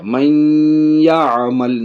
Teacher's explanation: من یعمل، نون ساکن کے بعد یا، یہ ادغام یا کی مثال ہے، من یعمل، ناک میں بھی آواز جائے گی، غنہ بھی ہوگا۔